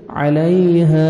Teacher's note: الف مد ہے, ہا کو 1 سیکنڈ کھینچنا ہے